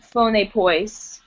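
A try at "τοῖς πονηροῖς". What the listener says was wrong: Yeah, you need to remember that's a rho, not a P.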